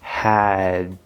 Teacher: instead of pushing it out, you're going to close it off in your throat. And remember, you're trying to just hold your breath for a little tiny, tiny moment, and then don't release the sound here, but release the air. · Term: glottal stop D